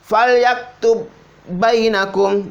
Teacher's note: Ba yang pertama kali ini dihilangkan, langsung masuk di ba yang kedua.